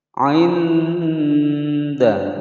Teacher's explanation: Thum'i, mim sukun bertemu ain dibaca jelas, hukum bacaan izhar syafawi. Ainda, nun sukun bertemu dal, hukum bacaan ikhfa, disamarkan disertai dengan adanya dengungan selama 2 ketukan.